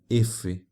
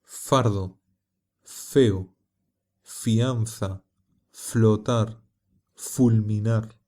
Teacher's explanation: La letra F se pronuncia colocando los dientes de la mandíbula superior sobre el labio inferior y haciendo pasar el aire entre ellos.